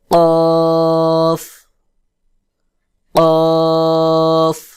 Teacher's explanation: জিহ্বার গোড়া ঠিক তার বরাবর উপরের তালুর সঙ্গে লাগাইয়া শক্ত করে গোল মতো করে আওয়াজ উচ্চারণ হবে